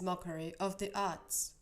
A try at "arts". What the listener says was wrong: Okay, and like when you're saying like arts, once again, I'm almost hearing you as if the word was spelled ATS. Like, that's kind of what I'm hearing, arts. So for an American accent, we want arts, and then for British, we'd want like arts, instead of just like arts.